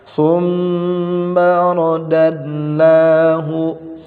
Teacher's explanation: Thumma gunnah ditahan, ditekan, fa-nya ujung lidah digigit.